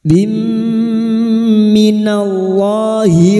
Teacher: Kasrotanin bertemu mim idgham bi gunnah, masuk dengan mendengung, masuk pada huruf mim dan mendengung selama 3 harokat